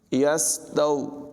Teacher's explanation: تا جو ہے اس کو نرمی سے پڑھیں گے، یہاں پر واو لین ہے۔